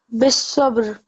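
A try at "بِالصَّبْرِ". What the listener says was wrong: Good. Try not to make it into a fatha stroke.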